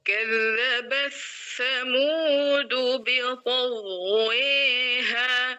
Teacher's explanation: Imam alqisai dua-dua perawinya sama-sama mengidgamkan ta ketika bertemu dengan tsa · Jadi suara ta-nya hilang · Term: idgham kabir